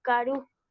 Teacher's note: Karu lleva el acento, esa carga adicional en la U, pero no pintamos la tilde, porque la regla nos dice que esa última vocal que está al final de la palabra no se acentúa.